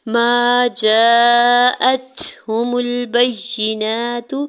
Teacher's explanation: ما جاءتهم البینات، جیم کے اوپر زبر ساتھ الف اٹیچ ہے، اس کے اوپر مد متصل ہے، 4 سے 5 حرکت کھینچ کے ادا کریں گے، حمزہ کے زبر کو تا ساکن کے ساتھ ملاتے ہوئے تا ساکن پہ حمز کریں گے، ہا کی پیش کو بغیر کھینچے ہوئے ادا کرنا ہے، میم کی پیش کو لام ساکن کے ساتھ ملاتے ہوئے پڑھیں گے۔